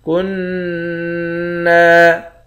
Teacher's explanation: کاف کو نون مشدد کے ساتھ ملا کر نون پر غنہ کریں گے۔